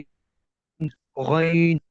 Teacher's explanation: जी गईन गईन हाँ, और इसको ना हमारा मुंह भरना चाहिए, नहीं, मुंह को, होंठों को थोड़ा सा मामूली सा करीब करके, गोल करके, लंबे होंठ नहीं होने चाहिए। और हमारा ये मोटा हर्फ अदा होना चाहिए, बारीक नहीं होना चाहिए। ठीक है। इन इन हरूफ की ये सिफ्त है कि ये मोटे होते हैं।